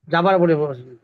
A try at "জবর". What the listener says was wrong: যাবার বলা যাবে না, যাবার শব্দ আরবিতে উচ্চারণ নাই এরকম।